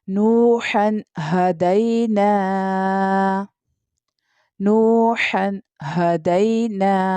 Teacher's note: نوح پر یہاں پر واو مدہ ہو رہا ہے اس لیے اس کو کھینچیں گے